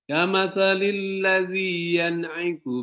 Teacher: tidak boleh berdengung, tapi dia cepat, dia izhar namanya